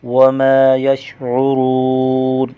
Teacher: میم پر الف مدہ ہے، ایک الف کھینچ کر پڑھیں گے، واو ساکن کا واو مدہ، را کو موٹا کر کے پڑھیں گے، نون وقف وجہ سے ساکن پڑھا جائے گا۔